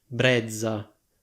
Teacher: la parola brezza andrebbe pronunciata come /breddza/ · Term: doppia Z